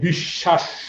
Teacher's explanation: কথা আবার বলি, বফলার কোনো উচ্চারণ নেই, কিন্তু বফলাযুক্ত বর্ণের অবস্থান যদি শব্দের মধ্যে বা শেষে হয়, তাহলে যে বর্ণের সাথে বফলাটি যুক্ত থাকে তার উচ্চারণ ডাবল হয়।